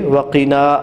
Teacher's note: وَقِنَا میں قاف کو موٹا پڑھتے ہوئے وَقِنَا الف مدہ کو کھینچیے